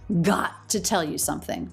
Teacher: So the vowel in the word to reduces to the schwa